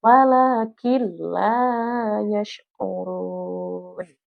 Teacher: Di mana huruf lam ini adalah salah satu daripada huruf idgham. Maka nunnya dihilangkan dan langsung kita tasydidkan kepada huruf lam.